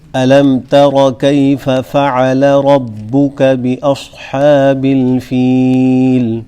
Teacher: ربک را موٹی پڑھی جائے گی